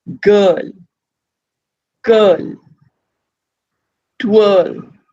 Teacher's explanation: The R is just very faintly hinted. You never actually pronounce that R sound.